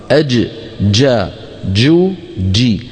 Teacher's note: صوتها محبوس لانها من حروف اجد قط بكت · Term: الجيم الفصيحه